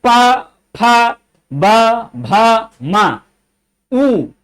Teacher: देखिए दोनों ओठ का संयोग बनता है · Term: ओष्ठ